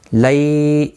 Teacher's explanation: یا لین ہے، تھوڑا نرمی کے ساتھ کھینچ کر ادا کریں گے